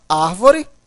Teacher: Olha só, a palavra árvore, veja, a sílaba tônica, olha só, a última, a penúltima e a antepenúltima. A sílaba tônica é a antepenúltima, portanto, uma proparoxítona.